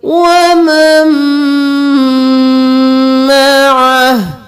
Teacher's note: یہاں پر ہم نون کو چھوڑ کر میم کو میم کے ساتھ ملائیں گے اور میم پر گنہ بھی کریں گے